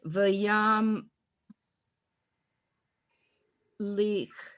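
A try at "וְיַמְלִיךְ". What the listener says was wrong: Although and the chaf, the final chaf is ch. So it's v'yam li.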